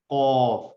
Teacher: قاف میں بالکل ہمارا حلق کا جو اسپیس ہوتا ہے وہ استعمال ہو رہا ہوتا ہے